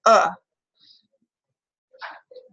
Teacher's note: our low Central non-rounded vowel